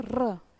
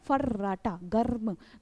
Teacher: र जैसे आप बोलते हो र, है ना, फर्राटा, गर्म, तो इस तरह से ये जो वाइब्रेशन होता है, कंपन होता है, जिसके कारण ही इसको हम प्रकंपित या फिर लुंठित व्यंजन के नाम से जानते हैं